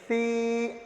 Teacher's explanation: ایک ہوتا سا، سا کی آواز نکالتے سمے ہم کیا ہے زبان کو تھوڑا سا دونوں دانتوں کے درمیان لے آتے ہیں